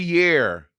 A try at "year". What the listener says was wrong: You were saying it like hair. You were saying year and hair. It's year and hair. Hair and year don't rhyme.